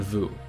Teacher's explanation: you make the same position with your mouth. The only difference is there's a vibration in your vocal cord.